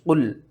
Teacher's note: قاف کو موٹا کر کے پڑھنا ہے، لام کے ساتھ ملانا ہے۔